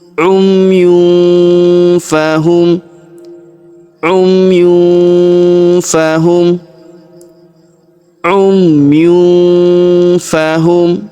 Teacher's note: Perhatikan tanwin un huruf yun bertemu huruf fa, maka kita dengungkan dan kita samarkan. Huruf yun tanwin un melebur masuk ke huruf fa ya, kita baca dengung dan samar.